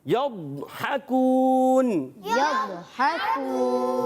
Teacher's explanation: حافت اللسان یعنی زبان کا بغلی کنارہ جب اوپر کی داڑوں کی 5 داڑوں کی جڑوں میں لگتا ہے تو یہ حرف ادا ہوتا ہے۔ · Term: ضاد